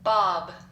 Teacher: starts with a bilabial sound ends with a bilabial sound